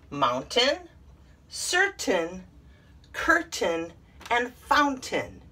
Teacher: all of them have a short i sound and not a long a sound